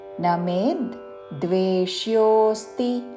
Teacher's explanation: దీర్ఘము మీద ఆఘాత వచ్చినప్పుడు ద్విత్వము చేసిన అక్షరము ద మే తో కలిపిన ద చాలా సౌమ్యముగా వినపడుతుంది